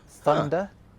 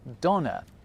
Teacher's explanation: where English developed a th sound in certain words, German went off in a slightly different direction and ended up with a duh sound instead